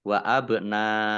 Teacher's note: Nun fathah alif mat tobi'i, tetapi karena bertemu dengan huruf hamzah di satu kata, ya, maka menjadi mat wajib muttasil, dibaca panjang harus 5 harokat.